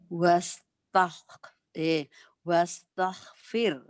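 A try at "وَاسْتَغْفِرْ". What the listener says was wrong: Itu wakaf isyarah, jadi wastaghfirh, firh, firhu, karena harus dapat huruf akhirnya. Banyak dia baca wastaghfir, salah. Karena hu itu mutlak harus ada.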